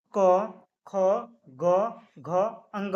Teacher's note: तो क वर्ग का जो उच्चारण स्थान है वो है कंठ। कंठ से क वर्ग का उच्चारण होता है